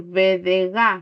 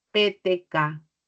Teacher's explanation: Por ejemplo, las oclusivas sonoras, yo puedo decir BD y las occlusivas sordas PTK